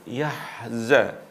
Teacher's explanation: ha ini juga bersifat rikhwah atau mengalir ketika diucapkan. Yahza. Tidak boleh yahza, ada jeda.